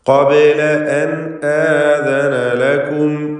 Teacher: ഖാഫിന് തഫ്ഖീം കൊടുക്കുക, ഇസ്തിഅലാഇൻ്റെ ഹർഫാണ്. ബാഇൻ്റെ സുക്കൂൻ ഖൽഖല സുഗ്റ നൽകി ശബ്ദം ഹറക്കത്ത് പോലെ ചലിപ്പിക്കുക.